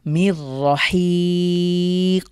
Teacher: শেষে কফের উপরে সুকুন থাকার কারণে আমরা ধাক্কা দিয়ে পড়ব কলকলার হরফ